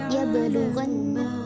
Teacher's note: Cara membacanya adalah dibaca memantul pada huruf qalqalahnya yaitu pada ba sukunnya.